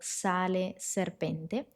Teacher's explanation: La letra S puede ser sorda al inicio de una palabra, por ejemplo, sale serpente antes de una consonante sorda. C, Q, F, P o T. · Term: la S sorda